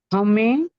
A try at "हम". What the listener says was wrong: हम है यहाँ, हमें नहीं है। मीम पे खत्म हो रहा है, हे है और मीम है, दो ही लेटर हैं।